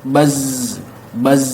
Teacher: Ujung lidah bertemu dengan gigi seri bawah bagian paling atasnya. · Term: as-safir